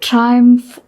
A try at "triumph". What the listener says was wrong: Triumph. Triumph. Umph. Triumph. I'm not hearing the umph. Triumph. Umph. Triumph.